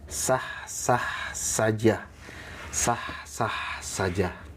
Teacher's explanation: sifatnya istifal, pangkal lidahnya tidak terangkat. Nah, kalau terangkat biasanya jadi kho. Ya, jangan diangkat tengah lidahnya.